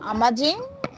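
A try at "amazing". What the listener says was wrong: অ্যামেজিং, আমাজিং বলবো না, অ্যামেজিং।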